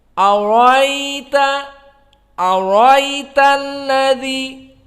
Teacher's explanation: Adapun di sini dihilangkan hamzah, tidak diganti alif. Dan tidak isba.